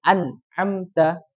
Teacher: An'amta, jadi ada dengungannya sedikit, tapi ringan ya, bukan tingkatan yang tadi. Nah, jadi itu izhar jelas tapi tidak hilang dengungannya.